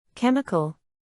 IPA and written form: ˈkɛm.ɪ.kəl (Chemical)